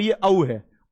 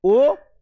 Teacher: जब आप औ बोलोगे तो हल्का सा थोड़ा ज्यादा खुलेगा